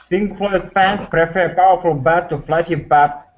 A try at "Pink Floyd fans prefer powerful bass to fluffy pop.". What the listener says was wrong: Why are you speaking so fast to me? One more time.